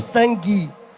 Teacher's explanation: A gente aqui fala sangue, como se fosse um I no final